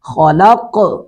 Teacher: نحن خلقناكم وشددنا أسرهم وإذا شئنا بدلنا أمثالهم وإذا شئنا بدلنا أمثالهم تبديلا إن هؤلاء تذكرة فمن شاء اتخذ إلى ربه سبيلا نحنو حا کو حلق سے ادا کریں گے، خلق خا کو پر کر کے پڑھیں گے